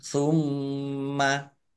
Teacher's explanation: mim tasdid bacaan gunnah atau mendengung ditampakkan dengungannya ditahan biar tampak dengungannya